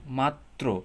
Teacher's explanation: যেমন আমরা যদি দেখি মাত্র, তো মাত্র ত, ত দেখছেন, মানে মাত্র তটা কিন্তু ডাবল উচ্চারিত হইতেছে, হ্যাঁ, র ফলার জন্য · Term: দ্বিত্ব